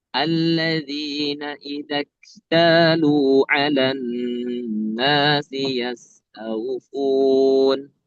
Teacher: kaf itu mengeluarkan angin dan bisa dikatakan sifat hamsnya itu akan semakin terlihat ketika sukun